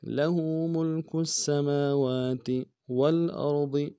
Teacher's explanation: ملک السماوات، لہ ملک السماوات والارض، واو کو لام کے ساتھ ملانا ہے، لام ساکن غنہ نہیں ہوگا، حمزہ کو را کے ساتھ ملانا ہے، را کو موٹا ادا کریں گے